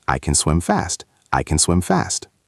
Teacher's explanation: But if I say, I can swim fast, the can shrinks.